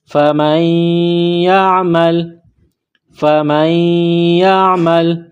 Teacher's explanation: گلے کے درمیان سے عین کو نکالیں گے